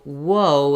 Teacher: i'm moving from the u through the uh to the o so whoa is like a long series of vowels